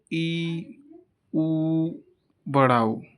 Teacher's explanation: जब इनका उच्चारण करते हैं तो देखते हैं कि मुख हमारा थोड़ा सा खुलता है, तो इसलिए इनको हम लोग कहते हैं समृद्ध स्वर। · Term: संवृत स्वर